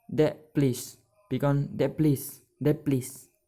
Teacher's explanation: The t, the consonant in the word of that become p. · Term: complete assimilation